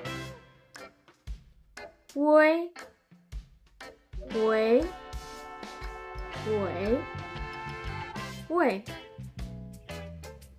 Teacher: podemos pronunciar primero la U y luego cambiamos la forma de la boca para lograr la E. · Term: vocal compuesta